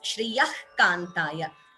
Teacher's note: So Visarga followed by Ka. Jihva Muliya. · We don't say Shriyaha completely. The Visarga not complete here.